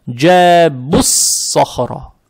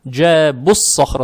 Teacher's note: Лям не читаем за счет того, что следующая буква в данный момент, буква сод, она солнечная. Поэтому из-за того, что лям не прочитали, буква сод, она удваивается. Теперь буква «сод» она твердая, фатха приобретает оттенок «о», то есть «со», «со», «джебуссо», «джебуссо», «джебуссохро».